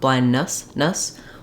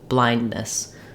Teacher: use a little bit of an i sound there beess because I'm basically doing as little vowel as possible moving from the N to the S uh with just a tiny bit of reduced vness blindness so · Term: reduced vowel